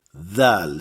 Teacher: C'est une interdentale, donc il faut absolument que la langue sorte légèrement entre les dents. Si on laisse la langue derrière les dents, ça devient z.